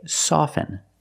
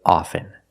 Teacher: with both words I don't pronounce a t i say soften and I say often